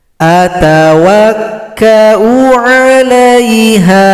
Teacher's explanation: hamzah yang dhammah tidak boleh dipanjangkan karena jumpa dengan alif. Jadi u dibaca pendek.